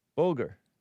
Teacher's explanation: B U L G A R. Bulgar with the stress on the first syllable